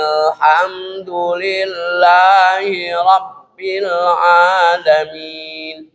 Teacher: Hamzah wasol itu hamzah yang tambahan. Maka hamzah wasolnya tidak dibaca.